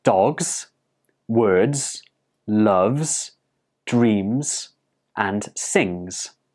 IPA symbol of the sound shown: z